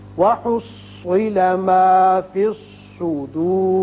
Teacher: وصل کی صورت میں را باریک ہے لیکن جب وقف کریں گے تو را پر ہو جائے گا اس لیے کہ پیچھے پیش ہے